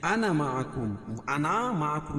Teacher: وانا لکھا لیکن نون کے بعد جو یہ الف ہے نہیں پڑھی جائے گی